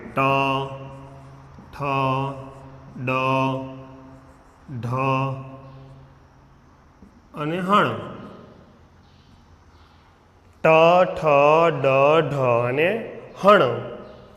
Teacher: આપનું જે દાંત જે છે દાંતના મૂળમાં આપની જે જીભ જે છે એ અડે છે. મૂર્ધન્ય કે જીભ જે છે જીભ મૂર્ધાને એટલે કે દાંતના મૂળને આપને અડે છે.